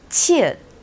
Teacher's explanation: This has a sound of ch in English, and it's an aspirated sound of jiet. You can hear the sound from chair or child from English.